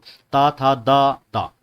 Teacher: ता वर्ग जो होता है दंत वर्ण होता है।